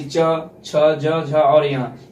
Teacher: इसका उच्चारण करने में तालु का सहायता लेनी पड़ती है, तालु के द्वारा इस ध्वनि का उच्चारण होता है